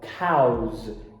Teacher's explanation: quando a gente for fazer vacas no plural, cows, com Z, porque todo ditongo, toda vogal é vozeada, então se você adicionar o S do lado ali de um fonema vozeado, ele vai vozear.